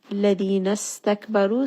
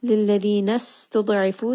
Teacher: Ladina stakbaru, seen has safir, meaning it has a little bit of that whistle